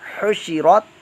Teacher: را تا زبرت، حشرت، یہاں پر حا پر حرکت ہے اور حا کو حا کے مخرج سے حلق کے درمیان والے حصے سے ادا کیجیے گا